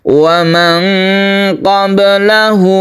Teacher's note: hak damir itu adalah hak kata ganti dia dipanjangkan karena diapit oleh dua huruf hidup yaitu la dan wa